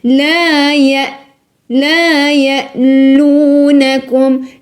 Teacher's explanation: Ne fais pas ya. Ne rebondis pas la hamza. Ya. Tes cordes vocales, il faut les serrer.